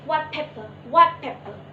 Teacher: the phoneme t in the word white becomes p, because the influence of the phoneme p in the word pepper, so the phrase becomes white pepper, white pepper.